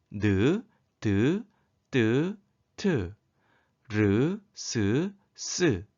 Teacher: 혀 끝과 윗 잇몸 사이에서 나는 소리를 잇몸 소리라고 합니다